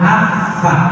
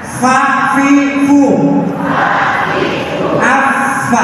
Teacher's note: gigi atas tempelkan ke bibir bawah